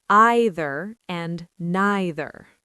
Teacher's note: in British English, Australian English and New Zealand English, you will very frequently hear the long I sound